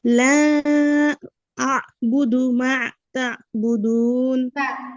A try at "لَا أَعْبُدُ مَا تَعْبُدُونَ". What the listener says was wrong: না, মা এরকম হয়ে গেছে, মায়ের সাথে কিন্তু আইন নাই। মা তা'বুদুন।